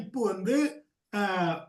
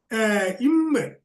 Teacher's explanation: ஆக இந்த 2 இதழ்களின் முயற்சியால் தொடுகின்ற பொழுது உங்களுக்கு பகரம் மகரம் தோன்றும்